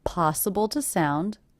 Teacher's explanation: the word two is definitely reduced to the schah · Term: reduced to the schwa